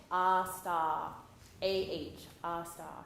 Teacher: No R's, nice long vowels. No no schwa, but sta. A-H, sta. Here we go.